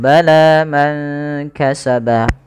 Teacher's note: panjangkan huruf la-nya sepanjang 2 harakat karena la di sini ada alif kecil yang datang setelahnya dan ia berada di atas huruf ya. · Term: mad tabi'i